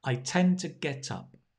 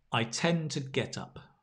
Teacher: Because you're stressing get up and tend, the to becomes t.